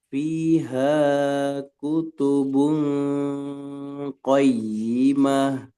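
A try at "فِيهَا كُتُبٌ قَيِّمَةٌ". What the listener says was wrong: Haknya jangan kepanjangan. Fiha kutubun qayyimah.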